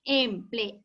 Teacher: Y la sílaba tónica solamente recae en la vocal A